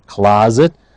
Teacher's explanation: the S is pronounced as a zed